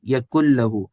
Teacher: نون اس کے اندر چلا گیا ہے لام کے اندر اور غائب ہو گیا، اس کو سائلنٹ کر دیں گے، نہیں پڑھیں گے، تو ہم کس طرح پڑھیں گے پھر اس کو؟ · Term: ادغام بلا غنہ